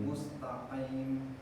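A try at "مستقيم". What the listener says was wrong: Mustaqim. Jangan dikeluarkan dari hidung. Jangan renungkan. Mustaqim. Nah, mendengungnya dihilangkan.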